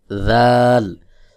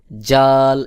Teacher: দাল যদি কেউ জাল এভাবে শক্ত বলে তাহলে এটা ভুল উচ্চারণ হবে। সহি উচ্চারণ হলো পাতলা করে জিহ্বার আগা সামনের উপরের দুই দাঁতের আগার সঙ্গে লাগাইয়া